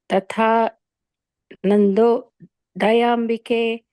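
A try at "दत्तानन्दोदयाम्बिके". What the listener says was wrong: The Dattanando Dayembike. You said yo, ye. Dattanando Dayembike.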